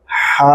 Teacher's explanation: یہ بڑی ہا ہے، اس کی آواز حلق سے ہا بولیں گے